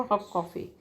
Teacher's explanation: हॉट की जगह, टी की जगह के का साउंड आता है, उसको कहते हैं रिग्रेसिव एसिमुलेशन